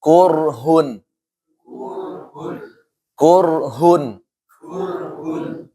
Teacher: Ra sukun sebelumnya fathah, ra sukun sebelumnya dhammah. Dibaca apa? Tafkhim.